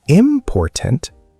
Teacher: if you said important, stress on the first syllable, it sounds strange, wrong. Native speakers might not understand immediately.